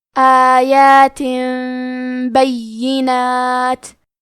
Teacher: تو ہم تنوین کو ہلکی میم میں بدل کے اور غنہ کے ساتھ یہ حکم کو ادا کریں گے۔ آیات بینات، کلمت بینات میں یا پہ تشدید ہے تو ہم 2 حرف کے برابر یا کو پڑھیں گے، اور کیونکہ تشدید زیر کا ہے تو ہمیں زیر کو بھی ظاہر کرنا ہے۔ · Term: قلب